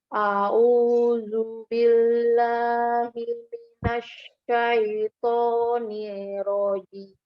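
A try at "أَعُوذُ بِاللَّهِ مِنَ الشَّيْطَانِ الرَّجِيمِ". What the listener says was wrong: A'udzu, tidak a'udzu ya, bukan huruf dad tapi hurufnya zal. A'udzu billahi minasyaitonir tasdid ya. Ada tasdid di huruf ro-nya. Nirrajim, tidak nirrajim, tapi nirrajim. Ya, tasdidkan ro-nya.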